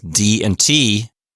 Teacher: D is voiced T is voiceless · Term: voiced and voiceless